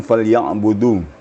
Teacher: Dal itu makhrajnya bukan di langit-langit tapi di gigi papan gigi atas depan ya